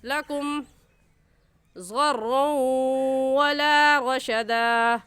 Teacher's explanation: لکم کی میم ساکن پر غنہ نہیں کریں گے کیونکہ قاعدہ یہ ہے کہ میم ساکن کے بعد با آ جائے یا میم ساکن کے بعد میم آ جائے تو اس صورت میں غنہ کرتے ہیں، اس کے علاوہ کوئی حرف آ جائے تو غنہ نہیں کرتے.